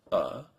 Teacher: keep your tongue still it's in the back Center of your mouth